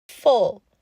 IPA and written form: fʊl (FULL)